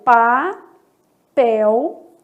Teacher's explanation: aqui eu tô vendo um ditongo fonético formada aí pela letra l